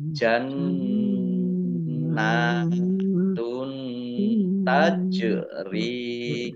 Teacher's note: jim sukun bacaan kolkolah dibaca memantul ditampakkan pantulannya.